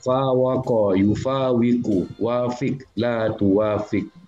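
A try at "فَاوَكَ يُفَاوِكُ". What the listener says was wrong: Terbalik hurufnya, bukan wafik tapi fawik.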